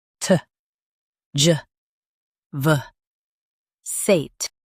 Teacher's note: Stress the juh sound and keep vuh light.